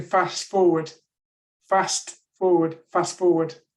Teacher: It's as if they're fast forwarding over that T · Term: elision